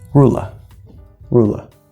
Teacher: a at the end is actually a schwa sound and it's the schwa sound from of instead of saying rule love rule of rule of you can